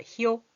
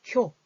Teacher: 이가 먼저 나왔다가 오, 두 가지 소리가 나잖아요. 이런 걸 이중모음이다.